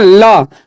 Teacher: जब आप ल बोलते हैं, ल को बोलिएगा तो दंतिया में सटेगा ना, तो ल काची हो जाएगा, ल और स काची हो जाएगा, दंत का उच्चारण स्थान हो जाएगा।